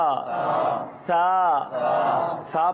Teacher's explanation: زبان کی نوک اور جو یہ دانتوں کی نوک ہے اس کو لگائیں گے. ثا میں سیٹی نہیں بجے گی.